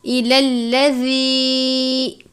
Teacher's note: زال کو ہمیشہ نرمی کے ساتھ پڑھتے ہیں، زال کو زا کی طرح سختی سے نہیں پڑھنا، نہ ہی جھٹکا دے کر پڑھتے ہیں۔